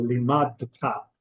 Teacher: For T sounds, we don't use our vocal cords, and for D sounds, we do. So we have to actually put a little break between the dalet and the tav, or else we wouldn't hear one or the other of them correctly.